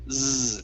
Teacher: So what you're doing, I want you to feel your throat. You're using your vocal cords saying z. There's a difference between z and s.